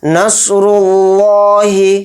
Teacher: صاد کو یہاں پر موٹا پڑھیں گے را کو بھی موٹا پڑھیں گے اور را کو لام میں ملائیں گے. لفظ اللہ کا لام جو ہے یہ ہے جس کے اوپر کھڑا زبر ہے تو لام کو تھوڑا کھینچیں گے یہاں پر اور لفظ اللہ کے لام کو موٹا یعنی پر پڑھیں گے کیونکہ اس سے پہلے را کے اوپر پیش ہے اس لیے لفظ اللہ کا لام موٹا پڑھا جائے گا.